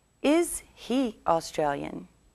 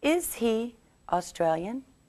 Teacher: When we make questions, we change the word order. First, we begin with the verb and then the subject and we put more stress on the verb.